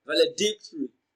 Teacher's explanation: d i c d is pronounced louder and longer it receives the stress in the word valedictory